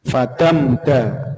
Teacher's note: mim sukun yang izhar syafawi Jadi tidak boleh didengungkan